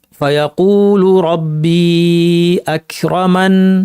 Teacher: গুন্নাকে আপনি লম্বা করবেন না, কারণ এখানে নুন একটা, নুন তাসদিদ ছিল না, এখানে আকরামানি ছিল, কোনো তাসদিদ ছিল না।